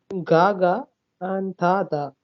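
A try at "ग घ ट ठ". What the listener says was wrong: So ga, ga. You repeated the same letter, I guess, again, if I heard that wrong. And ta, tha. Ta, tha, that's what you said. So it is a t. It's not a th, it's not a th. It's a th.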